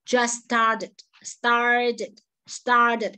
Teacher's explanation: t is a flat t between r and e sound